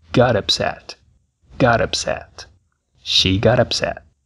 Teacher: perceba que o som da letra T é R